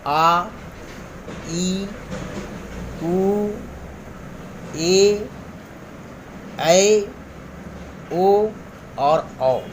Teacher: जिन स्वरों के उच्चारण में मूल स्वर का दुगना समय लगता है, यानी 2 मात्रा का समय लगता है, तो ये दीर्घ स्वर कहलाते हैं। यह संख्या में 7 है, जैसे आ, ई, उ, ए, ऐ, ओ और औ।